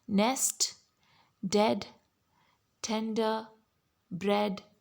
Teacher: notice that your jaw doesn't go as down as it goes when you say ah it opens more in and less in and your lips stretch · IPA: /e/